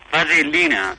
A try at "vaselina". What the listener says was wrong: No, con L sola, vaselina.